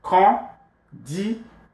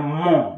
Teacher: Con, nasalize it, D, and then mon, nasal vowel.